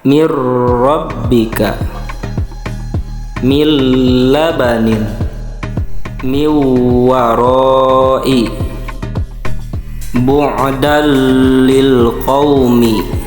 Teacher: memasukkan nun sukun atau tanwinnya kepada huruf setelahnya, sehingga nun sukun atau tanwinnya seperti hilang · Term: idgham